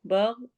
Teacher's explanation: गैन हुरूफ हलकी में से है और मोटा भी पढ़ेंगे।